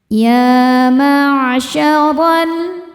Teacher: Huruf dibaca secara tafkhim karena roho berharakat fathah. Cara membacanya ditebalkan dengan cara mengangkat pangkal lidah kita.